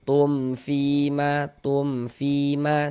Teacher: Maka dibaca jelas dan tidak berdengung. Maka dibaca pendek saja. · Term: izhar syafawi